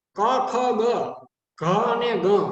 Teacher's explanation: ક, ખ, ગ, ઘ અને ગ એનું સ્થાન છે કંઠ્ય